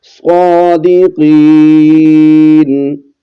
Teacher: صاد کو اور قاف کو موٹا کر کے پڑھنا ہے